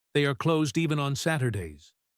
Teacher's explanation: She stresses the word even. This adds a layer of shock.